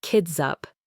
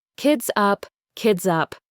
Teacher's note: That Z sound links directly to the vowel in up. So it sounds like kids up.